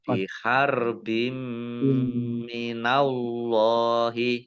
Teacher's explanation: Allahnya dibaca tebal. Ada karena harokat di depannya fathah. · Mim tasdid dibaca gunnah mendengung ditahan 2 harokat.